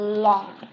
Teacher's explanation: In lateral, the tip of the tongue is pressed onto the alveolar ridge, ya, ujung lidahnya menempel, menekan alveolar ridge seperti pada gambar ini.